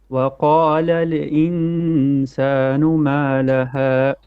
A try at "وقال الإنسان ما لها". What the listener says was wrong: وقال make your lam without bouncing. Don't say وقال in. No. وقال الإنسان.